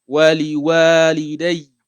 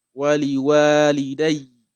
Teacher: So the yeah is will have a shadda normally, but you don't pronounce the alif, the fatha